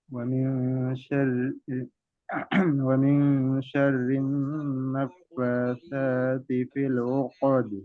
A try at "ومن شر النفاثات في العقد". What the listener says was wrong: এই যে উকদ, আইনের উচ্চারণ একদম চাপ হয় নাই। আইন দিয়ে আ ই উ, উকদ। হ্যাঁ, আইনকে আরো চাপ দেওয়ার চেষ্টা করবেন।